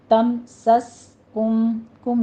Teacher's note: سین پر سیٹی کی آواز آپ نے لے کر آنی ہے ، اس کو تم سس کلکلا نہیں کرنا، بس آپ نے